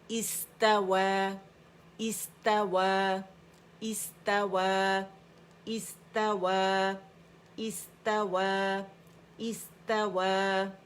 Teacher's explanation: استوا, اس, اس ایک کاؤنٹ کے لیے سین کے مخرج میں جائیں گے, رخاوہ ہمس اس کا شو کریں گے, صفیر بھی